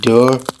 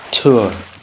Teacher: voice stops became voiceless